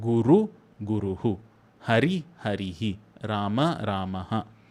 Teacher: visarga, it simply just takes on the vowel sound that comes before it. So guru, guruhu, hari, harihi, rama, ramaha, that is also optional.